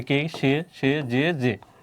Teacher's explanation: একাক্ষর সর্বনাম পদে এর উচ্চারণ অবিকৃত মানে কি সংবৃত হয়, মানে কি এর উচ্চারণ হবে কি এই, যেমন কে, ওই উচ্চারণ হচ্ছে কে, সে, যে।